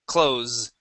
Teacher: Use a voiced S sound here instead of closed.